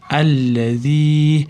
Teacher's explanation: Allazii, mana z da til bosamiz, undan keyin yaa madd bor, ozgina cho'zamiz.